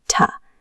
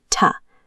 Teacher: The first sound yields almost zero air. The second sound must deliver a sharp, heavy gust of wind against your skin. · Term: aspiration